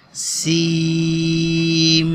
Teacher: سیم، سین میم پورا نہیں پڑھنا، کیونکہ یہاں پہ سین میم کے ساتھ ملے گا تو یہاں پہ جو آخری سین کی جو لاسٹ این والی ساؤنڈ ہے، نون والی، وہ نہیں آئے گی